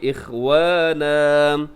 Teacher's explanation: اخوانن وقف کریں گے تو دو زبر کو ایک زبر کی طرح پڑھیں گے